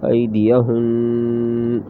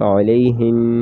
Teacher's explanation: وقف میں غنہ کر کے آواز ختم ہو جائے گی۔